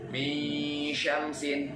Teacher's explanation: ada dengungnya tapi mulut kita udah monyong ke shin. Jadi akhirnya samar-samar.